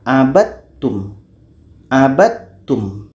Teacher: Supaya idgham kamil terjadi di sini, maka bunyi da masuk kepada ta.